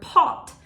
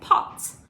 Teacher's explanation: It ends with a T, so it's a voiceless consonant, which means your vocal cords are not vibrating when you make the t sound